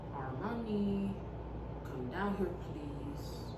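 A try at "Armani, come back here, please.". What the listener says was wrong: It doesn't say down. What does it say?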